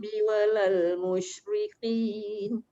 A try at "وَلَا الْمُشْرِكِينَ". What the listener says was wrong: Jangan tebal. Musyrikin.